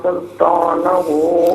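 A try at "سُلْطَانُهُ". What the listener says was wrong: سلطانہ نہیں ہے، سلطانہ ہے، نون پر پیش ہے۔ جزاک اللہ خیر۔ السلام علیکم۔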